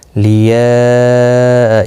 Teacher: یہاں مد متصل ہے، 4 الف کی مقدار کے برابر کھینچ کر پڑھیں گے